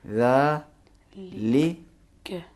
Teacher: ذا زبر کے بعد الف ہے، اس کو کھینچیں گے.